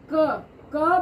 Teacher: हमने बोला तो कंठ के अंदर यानी कि जो गला है गले की जस्ट बाहर कंठ जहां स्टार्ट होता है उस स्थान को छूकर क साउंड आती है